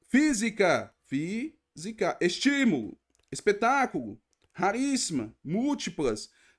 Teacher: não é a última nem a penúltima é a anti penúltima que é a forte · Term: proparoxítonas